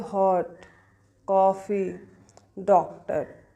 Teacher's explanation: जो हिंदी की अ और ओ के बीच की ध्वनि है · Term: अर्धचंद्राकार